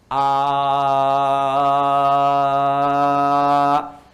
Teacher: kalau huruf hamzah, a dengan h itu satu makhraj, yaitu bagian kerongkongan bagian bawah di sini